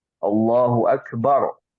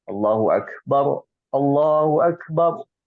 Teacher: nah ini tebal Kenapa karena belakangnya ada huruf fathah